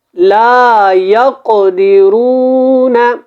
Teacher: یہاں پہ قاف کے اوپر قلقلہ بھی ہے، قاف کو موٹا بھی پڑھیں